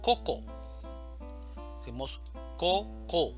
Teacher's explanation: la mayor fuerza de voz está en la primera sílaba, coco. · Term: sílaba tónica